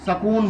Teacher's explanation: हरियाणा, पंजाब के लोग बोलेंगे तो उसको सकून बोलते हैं, ई छोड़ देते हैं।